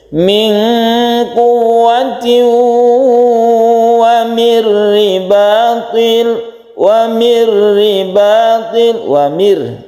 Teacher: nun mati bertemu dengan ro, ini idgham bila guna tidak dengung, kemudian ro-nya itu dibaca tipis karena berkasrah.